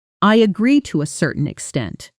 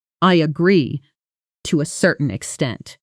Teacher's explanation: Here's a quick note on intonation because this phrase is often misused by learners who say it too flatly, making it sound almost sarcastic. When native speakers use to a certain extent, there's usually a slight pause before it and the voice softens slightly, signaling, I'm about to add a condition. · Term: softer tone